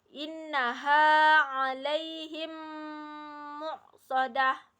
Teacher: Idgham mimi yaitu meleburkan bacaan mim sukun ke huruf mim yang menyambutnya disertai dengung